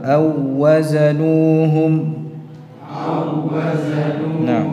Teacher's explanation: satu wau J di sini bertemu antara dua huruf yang sama wau ketemu wau dibaca seperti mengucapkan satu wau yang bertasydid